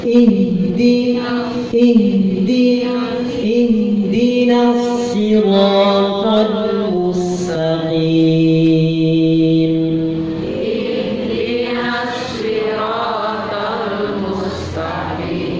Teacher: Ihdina alirkan, tetap kondisi pita suaranya kehembus oleh nafas.